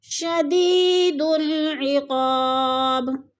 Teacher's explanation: یا ساکن سے پہلے دال کے نیچے زیر ہے تو یا مدہ کو ہم نے ایک الف 2 حرکات کے برابر لمبا کر کے پڑھنا ہے۔ عقاب با ساکن ہے اور حروف قلقلہ میں سے ہے تو وقف کی صورت میں با کو ہلا کر پڑھیں گے، یعنی قلقلہ کریں گے۔